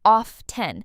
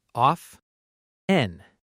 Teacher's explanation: a lot of native speakers say often with a silent T.